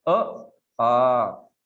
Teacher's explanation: तो दीर्घ जो है इस प्रकार से, तो जितना एक मात्रा का समय है उसके दुगुना 2 मात्रा का, मतलब आप अ बोलते हो तो उसके दुगुना आपने आ बोलने के लिए लेना चाहिए